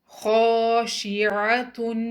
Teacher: الف، الف خالی ہے اور اس سے پہلے زبر ہے، تو ہم خو کی آواز کو 2 کاؤنٹ لمبا پڑھیں گے اور باقی تمام حروف کو سنگل کاؤنٹ۔ خاشعۃ، کوشش کر کے عین کو مخرج سے نکالیں، حمزہ کی آواز سے تبدیل نہ کریے